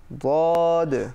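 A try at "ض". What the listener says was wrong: না দদ। যদি দদ বলি বাংলার দ দিয়ে, তাহলে জিহ্বার আগা ব্যবহৃত হয়, এটা ব্যবহার করা যাবে না। আবার না জদ, যা জিহ্বার আগা দিয়ে উচ্চারণ হয়, অর্থাৎ জিহ্বার আগা দিয়ে হবে না, হবে জিহ্বার পাশ দিয়ে। ওয়াদ। তাহলে আবারও আমরা দেখছি জিহ্বার গোড়ার কিনারা বাম দিক অথবা ডান দিক অথবা উভয় দিক লাগিয়ে ওয়াদ হরফটি উচ্চারণ করতে হয়।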